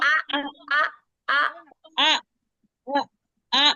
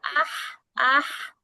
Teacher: এইটা হচ্ছে একটু কন্ঠের মাঝখান থেকে হামজা